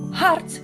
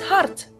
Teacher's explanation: A D or a T at the end of a Dutch word is pronounced exactly the same. Hart sounds the same as hart.